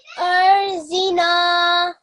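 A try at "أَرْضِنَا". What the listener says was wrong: Just this Z, it's not a Z, it's a dod. Okay? The correct way of saying it is dod. So it should be Ardina.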